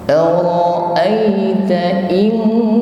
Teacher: Nun sukun bertemu huruf kaf. Jadi ketika mengucapkan in, ini mulut kita sudah bersiap pada makhraj huruf kaf dengan diiringi bunyi dengung. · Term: hukum ikhfa